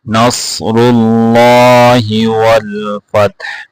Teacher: صاد کو موٹا کر کے پڑھنا ہے، را کو موٹا کر کے پڑھنا ہے، لفظ اللہ کو بھی موٹا کر کے پڑھنا ہے۔